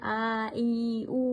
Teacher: ಇವು ಎರಡು ಮಾತ್ರೆ ಕಾಲದಲ್ಲಿ ಉಚ್ಚರಿಸಲ್ಪಡುತ್ತವೆ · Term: ದೀರ್ಘ ಸ್ವರ